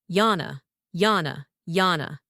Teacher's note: Begin with a light Y sound and hold the N just a touch. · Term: Nordic version